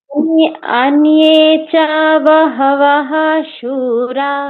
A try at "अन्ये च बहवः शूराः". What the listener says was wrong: না না না না, মাঝখানে কিন্তু বাহা বাহা এরকম বলবো না। বিসর্গ শেষে হলে বিসর্গের উচ্চারণটা আলাদা হয়, বাহা বাহা এরকম হবে, এটা মাঝখানে আছে। এখানে বলবো কি আন্নে চা বাহাবাসুরা।